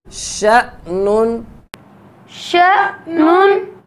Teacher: حمزہ ساکن ہے تو اس میں جھٹکا ہوگا